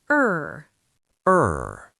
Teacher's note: This sound is longer and deeper. You need to hold the sound. And let it stretch a little. Your mouth is slightly round. Your tongue stays in the middle. The sound flows smoothly. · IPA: /ɜː/